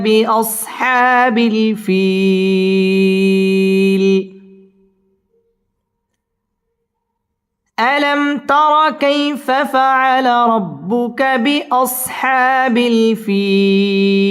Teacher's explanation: বিল ফিল জেরের বাম পাশে জজম আলাইয়া মদের হরফ, মদের হরফের বামের হরফে ওয়াকফা মধ্যে আরজি 3 আলিফ টান দিয়ে ওয়াকফ করতে হবে